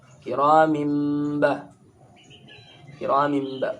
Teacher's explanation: Ra dibaca tebal, kinya tipis, kiramin. Mimba ini iklab. Mingkem cara bacanya.